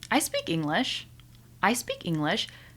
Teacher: did you hear how it went up in the very beginning? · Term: intonation